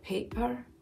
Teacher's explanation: That extra glottal catch there, paper, that's very classic Scottish. There are lots of glottal catches, lots of glottal stops in Scottish accent.